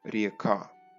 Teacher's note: This is how: going through Proto Slavic *RĚKÁ then going through the Slavonic and Old East Slavic RĚKÁ where Ě is pronounce as a long E or a diphthong IE